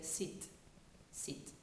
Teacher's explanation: In the French accent, when people speak French, the I is usually a long I, whereas we would make a short one. So for a word like sit, they would say sit, sit.